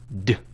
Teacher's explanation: The sound d is voiced. You use your voice to say d. You can feel the vibration here.